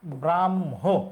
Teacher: ভুল এইটা যে যুক্তবর্ণটা আছে এই যুক্তবর্ণটা আছে ম আর হ আমরা যুক্তবর্ণ বিশ্লেষণ করলে হ যুক্ত ম লিখবো কিন্তু উচ্চারণের সময় ম আগে হবে